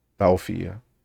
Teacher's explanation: The o, yeah, you got to make sure that o is just rounded